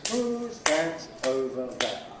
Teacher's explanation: Nucleus is on the last of these, which is there. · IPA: ˈhuːz ˈðæt ˈəʊvə ˎ_ðeə_